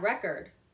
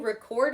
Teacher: The thing, the noun, has emphasis on the first syllable, and then the verb, record, will have it on the second syllable.